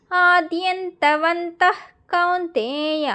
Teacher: క కి ముందు వచ్చే విసర్గకి ఆఫ్ పలకాలి కాబట్టి అక్కడ విసర్గకి హెచ్ సౌండ్ పెట్టుకోండి